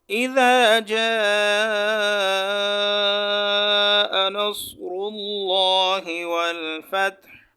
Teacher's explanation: لفظ اللہ سے پہلے پیش آئے گا تو ہم اس کو پر پڑھیں گے، موٹی آواز کے ساتھ ادا کریں گے.